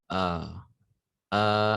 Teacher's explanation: A ni dia tak gunakan rongga hidung. Dia gunakan rongga kita punya leher kita.